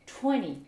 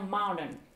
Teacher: lorsque vous avez des mots où vous avez un N suivi d'un T, le T disparaît au profit du N. Exemple, le chiffre 20, donc des Britanniques vont dire bien sûr 20, et des Américains vont dire 20.